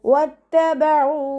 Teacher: വാവ് ഉച്ചരിക്കുമ്പോൾ ചുണ്ടുകളൊന്ന് വട്ടത്തിൽ പിടിച്ചു കൊടുക്കുക